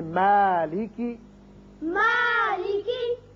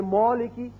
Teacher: اگر کوئی پڑھ دے مولکی تو یہ غلط ہے. کیوں کہ میم جو ہے یہ باریک پڑھا جانے والا حرف ہے، اس کی وجہ سے الف بھی باریک ہوگا